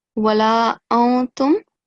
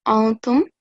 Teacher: the noon will be silent